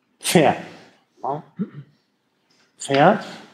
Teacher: der Anlaut von Pferd, ist ein Verschlusslaut, der gelöst wird und dann strömt noch Luft hinterher. Also nicht einfach Pferd, sondern Pferd. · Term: Mischlaute